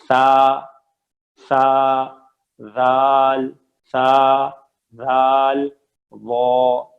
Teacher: زبان کی نوک بالکل وہی والی نوک ہے, لیکن اب دانتوں کی جو جڑ مسوڑے ہیں وہ نہیں, بلکہ جو آگے کے 2 دانت ہیں ان کی جو نوک ہے ٹپ. Tip of the tongue with tip of آگے کے جو 2 دانت ہیں ان کے ساتھ ہلکی سی زبان باہر بھی آئے تو حرج نہیں ہے